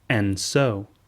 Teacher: The D sound drops from and.